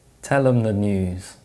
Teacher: Where the th sound is replaced with a different type of sound, it's known as manner assimilation.